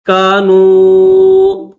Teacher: واو کے اوپر چھوٹی مد ہے تو 3 الف کی لمٹ میں کھینچیں گے